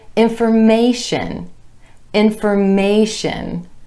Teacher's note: the stress shifts to that A vowel sound right before the TION ending